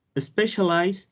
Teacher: specialize has three syllables and the stress is in the first syllable